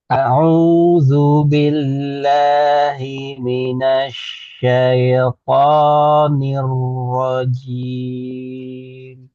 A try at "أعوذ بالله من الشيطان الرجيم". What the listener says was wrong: Nah, iya-nya tipiskan bukan syaito. Syaito ke i. Syaito. أعوذ بالله من الشيطان الرجيم